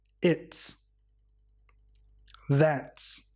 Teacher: after a voice sound or a vowel it sounds like so the contraction it's and that are pronounced with an S sound because the S comes after T a voiceless sound